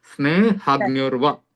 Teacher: हा के ऊपर थोड़ा सा अपने को जोर देना है बस